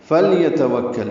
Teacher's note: لام ساکن پہ اظہار، یا تا جلدی ادا کریں گے، واو کو کاف سے ملائیں گے، کاف باریک ہے، لام باریک ہے